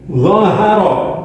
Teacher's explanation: Ini ra berharokat fathah, maka ra dibaca tafkhim atau tebal.